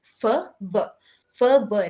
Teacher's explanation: நீங்க ப்ரொனவுன்ஸ் பண்ணி பாத்தீங்கன்னா உங்களுக்கு வந்து லிப்ஸ் அண்ட் டீத் ரெண்டுமே டச் ஆகும் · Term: லேபியோ டென்டல்